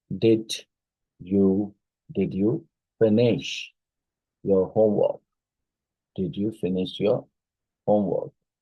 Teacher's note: it rises at the beginning and falls at the end